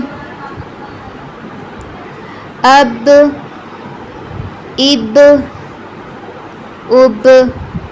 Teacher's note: حمزہ زبر با اب، با پر قلقلہ کریں گے